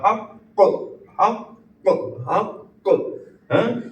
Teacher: یہ دوسرا والا کاف جو ہے وہ ساکن ہے تو اس کو تھوڑا سا رک کے پریشر دے کے ہم اس کو نکالیں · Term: حروف قلقلہ